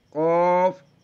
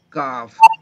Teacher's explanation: قوف زبان کی جڑ اور تعلق کے نرم حصے سے. کاف زبان کی جڑ تعلق کے سخت حصے سے